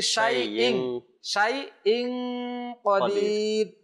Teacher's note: শাইইন ইয়া এবং হামজাকে একসাথে করে নাই